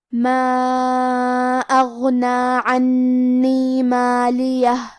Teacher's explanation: حرف الغین کی ادائیگی حلق کے اوپر والے حصے سے ہے. کیونکہ غین حروف تفخیم میں سے ہے تو ہم یہ حرف کو بھاری آواز میں پڑھیں گے۔